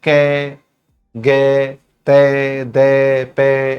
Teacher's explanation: बोलते समय हवा कम निकलती हो, वह होते हैं अल्पप्राण।